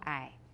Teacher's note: I is low falling tone